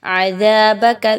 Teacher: دال کو بہت نرمی کے ساتھ زا کی طرح مشابہت نہیں دینی